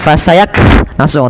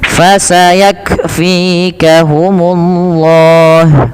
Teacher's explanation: ketika melafalkan kaf sukun, yaitu huruf kafnya yang pertama ditahan dulu nafas, ditahan dulu suaranya, baru alirkan nafas